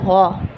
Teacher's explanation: غا جیسے ہم نارملی ادا کرتے ہیں اردو میں تھوڑا سا ہم موٹا کر لیں گے، مطلب گول ہونٹوں کے ساتھ ادا کریں گے